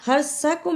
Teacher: را کو پر پڑھنا اور سا کو صحیح ادا کرنا، اس کی جگہ سین نہیں پڑھنا